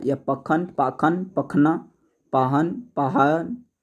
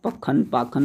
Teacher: स जो है ख के रूप में बदल जाता है, पखन पाखन कहलाने लगता है